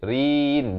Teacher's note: Naminal, naik di atas lam bertanda mati, alif lam qamariyah sekali lagi. Mumtarin, dan ra ini baris kasrah jadi nipis.